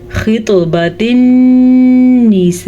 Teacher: इस मद की मिकदार तकरीबन 4 से 5 सेकंड तक लंबी की जाने वाली मद है। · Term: बड़ी मद